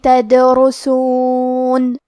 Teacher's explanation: کلمت تدرسون میں دال پہ جزم ہے کیونکہ دال بھی حروف القلقلہ میں سے ہے تو ہم یہ حرف کو ہلاتے ہوئے یہ کلمہ کو پڑھیں گے